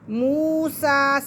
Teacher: سین کو ہم کھینچیں گے ایک الف کے برابر اور واو ساکن سے پہلے پیش ہے تو یہ واو مدہ ہے۔